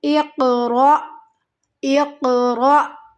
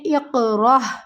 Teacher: یہاں پہ اکثر ہماری غلطی ہوتی ہے، اس لفظ کے اوپر ہم پڑھ دیتی ہیں اقرأ، را جھٹکا دیتی ہیں لیکن ہا کی آواز آتی ہے، یہ ہا نہیں ہے، حمزہ ہے، حمزہ کی آواز آئے گی۔ · را کو حمزہ کے ساتھ ملاتے ہوئے یہاں پر ہمیں جھٹکے کے ساتھ پڑھنا ہے۔